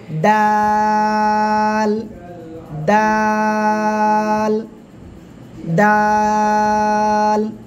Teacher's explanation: কোন জায়গায় থেকে উচ্চারণ করবেন? জিহ্বার আগা, সামনের উপরে 2 দাঁতের গোড়ায় লাগান লাগান লাগান, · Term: তিন আলিফ টান